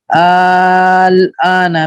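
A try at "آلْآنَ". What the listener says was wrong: और लंबा करें, अल आना, हाँ, ये 2 जगह है पूरे कुरान में मद्दे लाजिम किल्मी मुखफ़फ़।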